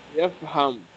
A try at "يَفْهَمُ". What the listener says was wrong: يفهمو. In مضارع we always add dhamma at the end.